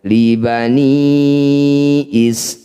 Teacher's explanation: Mad tabi'i bertemu dengan huruf hidup atau huruf yang tidak bertanda sukun, maka ini disebut bacaan mad arid lis sukun. I panjangkan 6 harokat, huruf terakhir sukunkan.